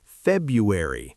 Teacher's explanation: That first R is almost swallowed.